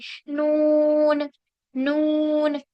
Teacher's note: इसमें आवाज जो है हमारी नाक से निकलेगी